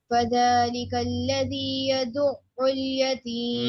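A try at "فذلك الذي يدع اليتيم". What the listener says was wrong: no it is still at the surface it should be deeper more deeper يدعو اليتيم يدعو ال the voice should be continuous it should not pause it should not stop you are just pressing the ayin for one second because of its shadda but still the sound is continuous it should not be stopped at any cost yadu ul yadu ul yadu ul yatim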